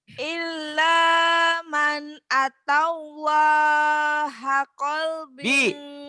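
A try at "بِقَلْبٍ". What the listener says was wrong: Bi-nya ketinggalan. Biqalbin. Iya, hanya pendek.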